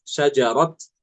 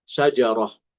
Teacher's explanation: Ketika wakaf di sini, Imam Hafiz baca dengan ta, ya, ta ta'nits, syajarot. Sedangkan Imam Al-Kisai dengan ta marbutoh, syajarah.